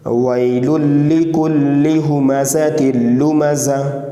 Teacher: آیت پر جب رکتے ہیں تو گولتا کو ہا ساکن سے بدل دینا ہے، تو یہ ہا ہو جائے گا، ٹھیک ہے۔